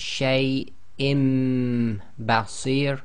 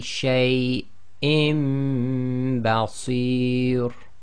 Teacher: So we have hamza with kasratain followed by ba, so they do the iqlab, so the noon sakin in the kasratain is changed to a meme, so they've substituted one of the fathas for a meme, so it's shay im basir, plus you have to apply ghunna, so it would be shay im basir.